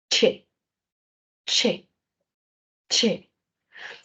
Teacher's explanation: Si usted pronuncia la che lentito, lentito, así, che, che, usted va a sentir cómo sus articuladores se pegaron como una oclusión y luego se liberaron y se produce una fricción. Es una combinación, una oclusión y una fricación casi simultáneas. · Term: africada, fricada